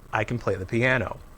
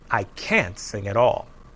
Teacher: the vowel help us hear the difference between can and can't can is usually unstressed and has the short weak vowel uh when it comes before a verb can't is always stressed and has a clear vowel sound